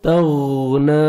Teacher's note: تا کو باریک پڑھ کے غین کو موٹا کر کے پڑھنا ہے, اچھی طرح غین ادا ہو.